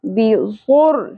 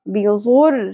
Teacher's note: ملانا ہے لیکن غنہ نہیں کرنا اواز کو ٹھہرانا نہیں ہے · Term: ادغام بغیر غنہ